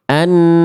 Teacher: Suara masuk ke dalam rongga hidung sehingga sengau.